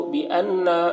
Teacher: नून मुशद्दद, नून में गुन्ना करेंगे